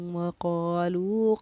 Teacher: وقالو کے لو کو ہم نے 1 الف کی مقدار کے برابر کھینچ کر پڑھا ہے۔ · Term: حروف مدہ